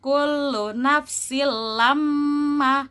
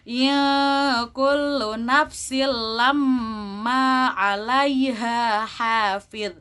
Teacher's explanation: ada gunnahnya, mim tasydid. Jadi harus ditahan 2 harokat.